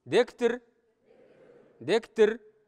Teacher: Вот здесь между Т и Р редуцированное гласное.